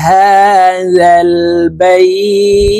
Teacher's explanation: বাই এক আলিফ টেনে তাকে সাকিন করতে হবে, কারণ লিনের হরফের বামের হরফে ওয়াকফ হইলে মধ্যে লিন এক আলিফ টানিয়া পড়িতে হয়।